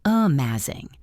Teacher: That first sound is so small it almost disappears.